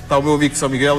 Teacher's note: O L bem pronunciado, né? Bem tocado no céu da boca.